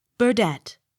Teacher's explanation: Accent on last syllable.